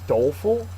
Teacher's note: Doleful is an adjective. First syllable is accented.